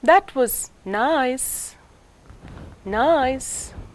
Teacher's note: a divided fall rise as the fall is on one syllable and the rise begins on a later syllable